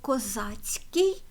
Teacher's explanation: Ми щойно бачили к і с злилися в один звук ц